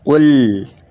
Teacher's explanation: harus dibaca qul dan harus mengalir sedikit karena sifatnya lam itu tawasut. Tawasut itu antara tertahannya suara dan mengalirnya suara, atau antara terpotongnya suara dan mengalirnya suara.